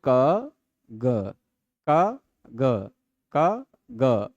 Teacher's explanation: ग बोलने में अलग गूंज होती है। गले में होती है। क खलेंगे तो वो नहीं होगा। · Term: घोष